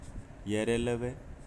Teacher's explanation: फिर अंतस्थ व्यंजन य र ल व यह घोष में भी थे और अल्पप्राण में भी है। तो य र ल व ये चारों जो अंतस्थ व्यंजन है वो अल्पप्राण होते हैं और घोष में भी होते हैं